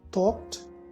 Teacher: It says if the sound immediately preceding the ED is a voiceless sound, okay, no vibration of the vocal cords when we produce it. If it is a voiceless sound other than t, like the k in the word talked, then the ED is pronounced as t.